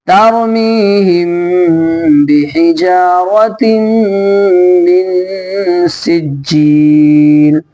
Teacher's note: غنہ ہوگا، ناک میں آواز بالکل چھپا دیں گے